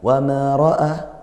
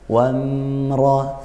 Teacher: Tekankan di mimnya dulu, lepaskan dulu sedikit sehingga dia tidak ada tawallud. Wamra, seperti itu.